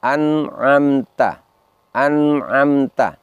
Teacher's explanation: Di situ nun sukunnya terdengar jelas ketika bertemu dengan salah satu huruf tenggorokan yaitu ain. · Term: idhar halqi